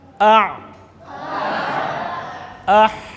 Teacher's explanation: حلق کے درمیانی حصے سے عین اور حا ادا ہوتے ہیں۔